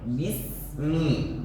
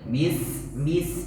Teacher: Huruf sin ditipiskan lagi desisnya. Bismi, bukan bis masih tebal.